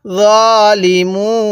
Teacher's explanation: ওয়াকফের সময় কিন্তু আমরা এখানে তিন আলিফ টান দিব